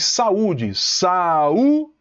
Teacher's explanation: O U é forte e forma hiato com a vogal que está antes.